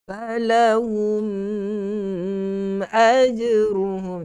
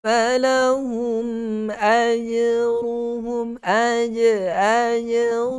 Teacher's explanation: Falahum ayruhum, mim mati bertemu dengan hamzah, izhar syafawi. Jelaskan sebutan huruf mim yang mati itu, jangan kita dengungkan, jangan kita panjangkan pada dengungnya.